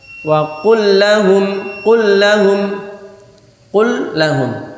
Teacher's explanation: Terasanya adalah ditekankan saja sehingga lamnya kayak bertasydid. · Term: idgham mithlain